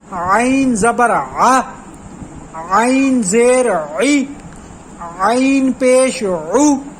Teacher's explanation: حلق کے بالکل درمیان والے حصے سے عین کی آواز نکلتی ہے